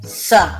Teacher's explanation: जब हम स वर्ण का उच्चारण करते हैं तब जीभ दांतों का स्पर्श करती है, इसलिए इसे दंत सा कहते हैं।